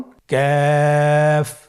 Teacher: কাফ উচ্চারণের ক্ষেত্রে অবশ্যই পাতলা করে উচ্চারণ করতে হবে এবং তিন আলিফ টেনে পড়তে হবে।